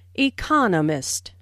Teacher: there are four syllables in Economist with the stress on the second syllable